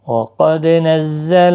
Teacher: نزل زا کو سختی کے ساتھ ادا کریں، حروف صفیریہ کا زا ہے